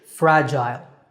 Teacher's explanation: In British English, the second syllable is gile, fragile. So American, fragile, and British, fragile.